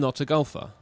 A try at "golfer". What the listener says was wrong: No, I know you're not a gopher. I said, are you a golfer? Yeah, you're saying gopher. golfer, the sport.